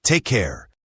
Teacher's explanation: For take care, this is a friendly farewell. Take has a long A sound and care has that rounded R sound.